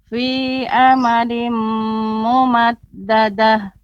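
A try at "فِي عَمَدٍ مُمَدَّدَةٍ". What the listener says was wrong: Namun lebih diperhatikan lagi mim mati bertemu dengan mim. Ini ada tasydidnya. Nah, maka diberi tempo ya, tidak terlalu cepat pengucapan mim mati bertemu dengan mim.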